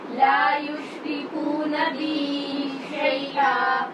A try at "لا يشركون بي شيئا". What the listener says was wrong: را کو ٹھیک نہیں پڑھتے آپ لا يشركون بي شيئا